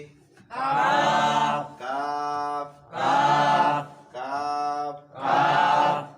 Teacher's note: জিব্বার গোড়া হইতে একটু আগে বাড়াইয়া তার বরাবর উপরে তালুর সঙ্গে লাগাইয়া মধ্যখান পেঁচানো কাফ